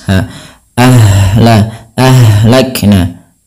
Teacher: ha di sini juga ada yang kita namakan dengan sifat rakhawah. mengalirnya nafas. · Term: sifat rokhawah